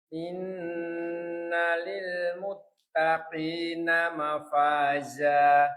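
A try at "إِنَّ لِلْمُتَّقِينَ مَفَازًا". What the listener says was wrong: Ini off-nya itu jangan terlalu nyeklik banget. Muttaqina mafaza. Nggih, coba innalil muttaqin. Nggih, muttaqi. Bukan kurang, tapi terlalu nyeklik banget. Muttaqina mafaza.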